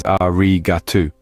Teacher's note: with the accent on the second syllable remember the final you is silent so don't stress too much